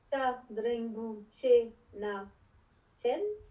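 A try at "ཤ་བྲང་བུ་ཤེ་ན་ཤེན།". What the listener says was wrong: Un petit peu plus expiré serait super. Mais cha dembu chen na chen, hein, c'est carrément franchement expiré.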